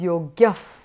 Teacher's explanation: Since the ayogyaha ends with a visarga and is followed by the sound p, the yogyaha becomes yogyaf.